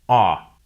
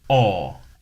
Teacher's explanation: the American O sound is an unrounded vowel, ah, while the British O sound is rounded, aw.